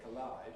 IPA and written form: kəˈlaɪd (collide)